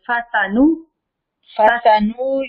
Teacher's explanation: کسی کو بھی ہم لمبا اس لیے نہیں کر رہے کہ زبر اور پیش کوئی کھڑی زبر نہیں ہے کوئی وہ مدہ وغیرہ نہیں ہے فاسانو جلدی سے ہم نے